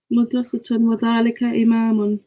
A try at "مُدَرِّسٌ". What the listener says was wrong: So when you say madrasatun, you're putting a tamabuta on the end, yeah? But there is no. The last letter is seen. There's no tun on the end of that. Where's the T sound coming from?